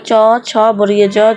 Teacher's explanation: তাহলে চাবির প্রথম অক্ষর হচ্ছে চ, তাহলে চ, ছ, বর্গীয় জ, ছ, তালবস্য, তাহলে এইগুলো হচ্ছে তালব্য ব্যঞ্জনের বর্ণ হবে। তো যখন চ বলতেছি তখন এই যে আমাদের জিভের সামনের অংশটা এটা কোথায় যাচ্ছে, শক্ত তালুতে লাগতেছে